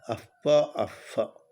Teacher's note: अब प और फ से पूर्व जो अर्ध विसर्ग है उसको उपधमानी कहते हैं